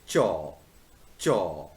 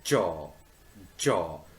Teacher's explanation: chaw is voiceless affricate and jaw is voiced affricates